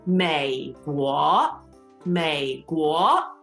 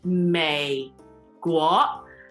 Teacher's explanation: Third tone, second tone.